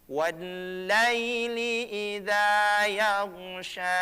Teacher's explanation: Huruf gha itu bukan huruf yang dikalkalahkan atau dipantulkan, cukup ditahan.